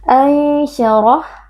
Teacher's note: ra huruf tafkhim kita baca dengan tebal dengan mengangkat pangkal lidah karena di sini huruf ra berharakat fathah.